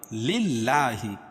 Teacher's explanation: یہ اللہ کا لام باریک پڑھا جائے گا